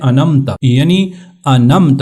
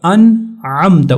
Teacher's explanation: نون کے اوپر یہاں پر اخفا بھی نہیں ہوگا، غنہ بھی نہیں ہوگا، کیونکہ عین حروف حلقیہ میں سے ہے ، لیکن نون کو ظاہر کرنا ہے کہ یہاں پر نون · اس کے بعد عین کو بھی ظاہر کرنا ہے، گلے سے نکالنا ہے · نون کو ظاہر کرنا ہے کہ یہاں پر نون ساکن ہے